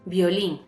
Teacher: Como la sílaba tónica de violín está en la última sílaba, vemos que es aguda y como acaba en N, lleva tilde.